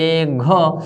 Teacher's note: ઘ વ્યંજનના ઉચ્ચારણ વખતે ફેફસા વાટે નીકળતી હવાનું પ્રમાણ વધારે છે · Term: મહાપ્રાણ